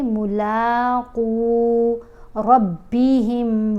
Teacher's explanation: الذین یظنون انہم ملاقو ربہم وانہم الیہ راجعون۔ یہاں ہم نے قاف کو موٹا پڑھنا ہے اور ایک الف جتنا لمبا پڑھنا ہے۔ قاف کے اوپر پیش ہے، ساتھ واو ساکن ہے، حرف مدہ ہے۔